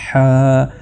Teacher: اس کی آواز حلق کی گہرائیوں سے پیدا ہوتی ہے، لیکن یہاں پر رگڑ نہیں ہوتی، ہا یعنی بالکل سافٹ اور نرمی کے ساتھ اس کو آپ نے ادا کرنا ہے۔